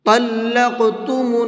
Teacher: طا کو منہ بھر کے پڑھیں گے اور قاف کے اندر قلقلہ کریں گے، کیونکہ قاف حروف قلقلہ میں سے ہے، اور حروف قلقلہ کے اندر قلقلہ کرنے کی شرط یہ ہے کہ ان کے اوپر جزم ہونا چاہیے۔